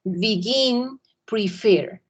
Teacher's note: And the final syllable is stressed in speech. Entonces la segunda tiene el acento.